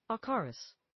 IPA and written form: ˈækərəs (acarus)